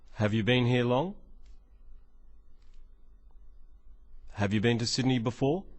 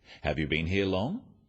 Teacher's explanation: Questions that start with have you are yes-no questions, so they have a rising tone.